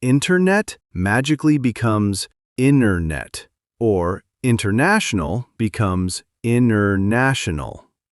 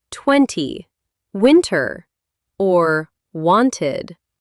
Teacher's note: In real life, when a T is between two vowel sounds or after an N, it often just takes a vacation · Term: the disappearing T sound